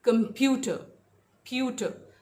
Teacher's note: प्यूटर, second syllable पे stress है